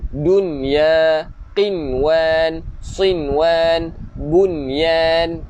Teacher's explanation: So untuk 4 kalimah ni sahaja ibu-ibu ayah-ayah kita bukan idgham bi gunnah, bukan memasukkan dengan dengung, tetapi kita kena jelaskan bukan dunya, bukan qiwan, bukan siwan, bukan bunyan, tetapi kita jelaskan nun. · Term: izhar mutlak